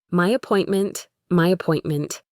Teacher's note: To say this smoothly, we can put a small Y sound between my and appointment.